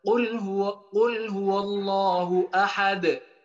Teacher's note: Ketika ada dal mati dengan pantulannya harus jelas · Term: qalqalah